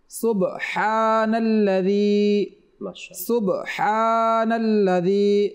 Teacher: এই শব্দের মধ্যে হা রয়েছে, আমরা যেন সুবহান বড় হা না পড়ি, সুবহানাল্লাযী আমরা এটা যেন না পড়ি, সুবহানাল্লাযী, সুবহানাল্লাযী।